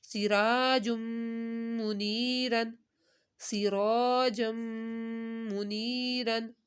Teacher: نے غنہ کیا ہے کیونکہ تنوین کے بعد میم ہے، سرا، را کو ہم نے ایک الف کے برابر کھینچا کیونکہ الف سے پہلے زبر آ رہا ہے